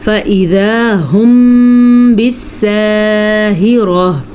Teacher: میم ساکن کے بعد جب با آ جائے تو وہاں پہ قدرتی طور پہ ہونٹوں کو بند کرنا ہوتا ہے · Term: اخفاء شفوی